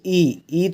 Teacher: जाती है ई अब कंठ से नहीं है बोले ई ई थोड़ा ऊपर से बोली जाएगी कंठ के ऊपर से तो उसे तालू कहते हैं